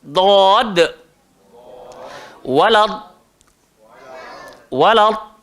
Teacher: sepanjang-panjang lidah, dia kena pergi ke atas gigi kita dan lidah kita membentuk bagaikan sudu. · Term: huruf dad